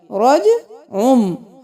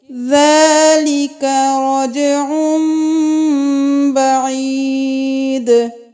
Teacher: رو زبر جیم روج، عین 2 پیش عن، رجعن، تو یہاں پہ ہم رجعن بعید نہیں کریں گے، یہاں پہ ہم عین کے ساتھ میم کی آواز نکالیں گے، رجعم، ہم یہاں پہ تنوین نہیں پڑھیں گے، ہم یہاں پہ رجعم کریں گے، عین 2 پیش میم عم، اس میم کو ہم پورا پڑھیں گے، جیسے کہ ذَلِكَ رَجْعٌ بَعِيدٌ۔